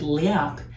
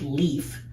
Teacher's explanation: This is actually a word that we have in English, except in English, the p sound at the very end weakened to an f sound. So in English, we have l, e, a, f, which is the word leaf.